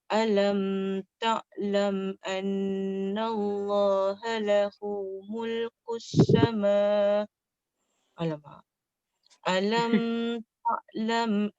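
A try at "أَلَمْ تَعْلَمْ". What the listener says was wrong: Jangan. Alam tu kan ada tanda mati. Alam tu tak boleh dengung. Tak boleh. Alam tak boleh. Sebab dia tanda mati. Dia yang lama tu yang tak ada tanda.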